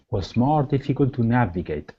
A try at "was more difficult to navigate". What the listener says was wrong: All right, now on difficult, give me a short I instead of diffe.